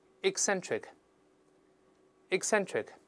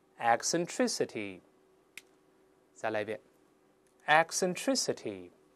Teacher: 注意第一个字母▁e▁由▁e▁变成▁i▁这个声音，口型大一些